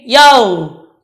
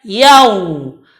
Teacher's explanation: Tetapi monyongkan mulutnya dan jalankan suaranya. Karena waw ini termasuk huruf yang rakhwah, yang mengalir suara. Maka bacaannya yau.